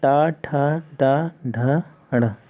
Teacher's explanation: इनका जो उच्चारण स्थान होता है वो मूर्धा से होता है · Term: मूर्धन्य वर्ण